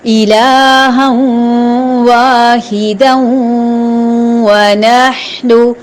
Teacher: جب ملے گا تو ادغام ہوگا اور غنے کے ساتھ ہوگا، آواز ناک میں جائے گی اور غنغنی ادا ہوگی.